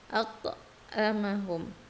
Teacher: Karena huruf qalqalahnya berada di tengah-tengah kalimat dan berharokatnya sukun. Bacanya harus ditekankan untuk qalqalah ya. Memantul. At-ta'amahum. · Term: qalqalah sughra